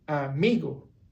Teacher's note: For example, in this case would be mi, amigo. So you're flat on a, raise your voice in mi, and then flat on go.